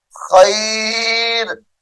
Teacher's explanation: ये खैरुन है, वक्फ की हालत में खैर पढ़ेंगे।